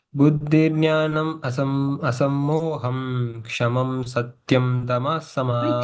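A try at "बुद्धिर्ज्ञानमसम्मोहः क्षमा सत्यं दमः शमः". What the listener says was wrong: Kshamam, asammoham. Why are you saying im for everything? Asammoha. Kshama. Kshama satyam dama shama. Kshamam, again I'm saying. Kshamam nahi hai na yahan pe. Kshama, yahan pe bhi kshama.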